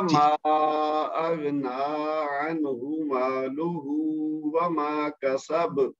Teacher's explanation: عنہ یہاں پہ صرف پیش ہے اور مالہ اس پہ الٹا پیش ہے تو اس کو 1 حرکت دینی ہے اس کو 2 حرکت دینی ہے